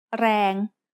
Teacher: rang has a low class consonant and a live ending so it is pronounced midtone